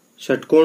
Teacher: इसका उच्चारण स्थान है मूर्धा, यानी कि जीभ मुड़ जाती है जब इसको अपन बोलते हैं, इसलिए इसका दूसरा नाम या इसको मूर्धन्य श भी कहते हैं।